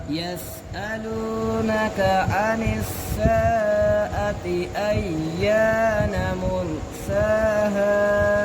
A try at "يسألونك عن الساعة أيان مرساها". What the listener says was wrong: आपने साआती को ज़्यादा लंबा किया है يسألونك عن الساعة أيان مرساها